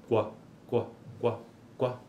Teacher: ele apresenta um arredondamento dos lábios · apresenta um arredondamento dos lábios ó então qua qua qua qua é esta oclusiva velar no caso o c com arredondamento com uma espécie de semivogal u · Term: consoante complexa